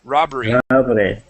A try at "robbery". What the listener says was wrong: Okay, the end here, you're pronouncing a hard R, saying robbery. Okay, robbery. Try that.